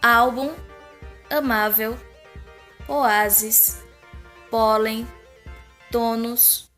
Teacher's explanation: tônica é a penúltima sílaba é a mais forte